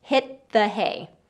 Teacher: So as far as the linking and connecting with that word and the pronunciation, hit the hay, hit the hay. That T to the TH sound, just stop the T and lead right into the TH sound.